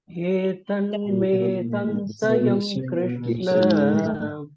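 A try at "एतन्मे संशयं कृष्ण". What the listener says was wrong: samshayam Krishna, not samsa, it is samsha. Etanme samshayam Krishna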